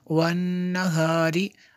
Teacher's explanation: نون میں شدد ہے اس لیے ہمیں غنہ ہوگا